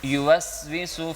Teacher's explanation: اور سین تو ہمیشہ باریک ہوتی ہے، سین کو سیٹی کی آواز میں پڑھتے ہیں